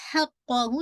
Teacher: हा को लाइट रखे, हा करके नहीं मोटा कीजिएगा, हा को लाइट, हक़्क़हु जब मखरज से निकलेगा ना, हैवीनेस आएगी नहीं इसके अंदर, काफ को हैवी, क्योंकि ये आपको पता है कि हैवी लेटर्स है।